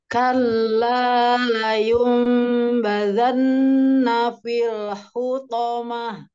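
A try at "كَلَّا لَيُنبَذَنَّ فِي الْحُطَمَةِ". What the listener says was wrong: Sekarang lamnya ditipiskan Mi, o-nya ditebalkan. Hati-hati nih, kalla sempurnakan tipisnya ya, Mi.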